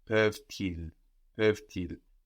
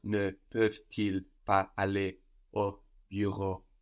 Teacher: So, if we were to make the inversion here, we would have an obligatory liaison because these words are so connected in meaning